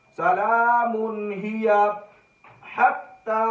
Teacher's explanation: من تنوین ہے، تنوین کے بعد ہمیں ہیا، یہاں پر ہا مل گیا، ہا حروف حلقی میں سے ہے، یہاں پر غنہ نہیں ہو رہا بلکہ اظہار ہو رہا ہے · ہا حروف حلقی میں حلق کے سینہ کی طرف سے ادا ہوتا ہے